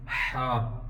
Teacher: اس کی خلق سے آواز ادا ہوگی